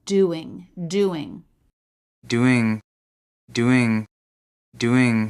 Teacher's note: it helps to connect them by thinking of a quick Glide consonant in this case it would be W